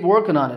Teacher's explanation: The G got dropped from working there.